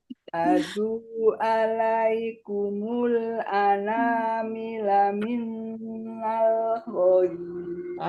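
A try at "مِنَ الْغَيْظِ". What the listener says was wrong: Bukan min karena nggak ada, ya nggak ada tasdid. Addu. Ana mila minal, lanya pendek Bu. Bukan minnal, setelah ana mila minal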